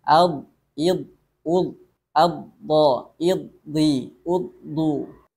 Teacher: huruf dhad ini kalau dipraktekkan untuk sifat rokhawah ini seolah-olah tidak ada aliran bunyi